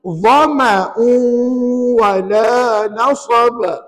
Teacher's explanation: Perkataan dhama, ma itu pendek, jangan panjang.